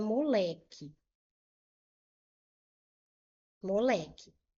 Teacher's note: Qual é a sílaba tônica mais forte? Moleque é o lé. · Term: paroxítona